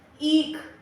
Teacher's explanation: जब हमें इ बोलने में ज्यादा टाइम लगता है तो उसे हम बड़ी ई कह लेते हैं